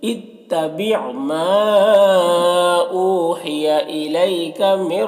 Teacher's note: نون ساکن کے بعد را حروف یرملون میں سے تو ادغام تام ہوگا، بغیر غنہ کے پڑھیں گے، را کو پر پڑھیں گے، اس طرح سے۔